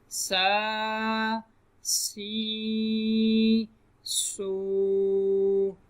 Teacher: سین کی ادائیگی کے وقت سیٹی کی آواز پیدا ہوگی، تو سیٹی کی آواز پیدا کریں گے تو سین صحیح طریقے سے ادا ہوگا.